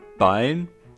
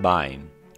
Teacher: the vibration of the vocal cords is weaker than it should be in a normal voiced sound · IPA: [b̥aen]